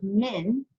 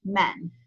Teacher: the word meme and noon can be pronounced either min, or it can also be pronounced with feta, men